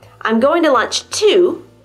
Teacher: the primary stress is on the word to. I'm going to lunch to, because it's at the end of a sentence.